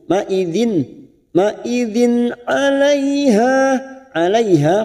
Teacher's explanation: Kasr tanwin bertemu ain idhar halqi dibaca jelas tanpa mendengung